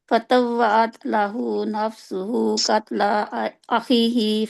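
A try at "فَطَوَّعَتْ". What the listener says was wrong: आप ना बहुत आसानी के साथ ता और का पढ़ रहे हैं।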